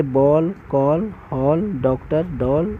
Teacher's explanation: ओ जो है आ और ओ के बीच की ध्वनि है